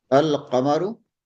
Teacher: in the huruful qamariya, we pronounce the lam of the definite article al.